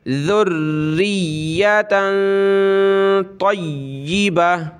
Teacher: من لدنک ذریۃ طیبہ، ذال را پیش در را، یا زیر ری، یا زبر یا، ذریہ تا دو زبرتن ناک میں آواز پیدا کریں گے. ذریۃ طیبہ، طا یا زبر طی، یا زیر ی، طیبہ زبر با، تا دو زبرتن، طیبتن وقفاً جب رکیں گے تو گولتا ہا بن جائے گی، طیبہ.